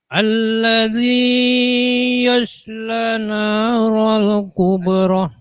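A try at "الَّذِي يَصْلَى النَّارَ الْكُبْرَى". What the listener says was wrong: Nunnya tasydid. Alladzi yasla naral kubra.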